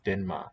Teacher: the n colors the r to an n